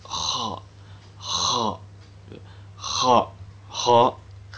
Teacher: Makhraj huruf kho adalah tenggorokan bagian atas.